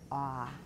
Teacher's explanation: You're making it a little too short. Ah is not a short vowel, remember.